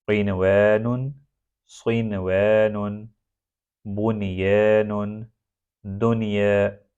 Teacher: یہ چار حروف ادغام بالغنہ سے مستثنیٰ ہے، یہاں پر نون سکون کو ظاہر کر کے پڑھا جائے گا۔